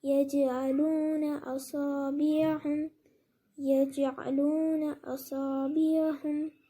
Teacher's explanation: میں نے جیم پر قلقلہ کیا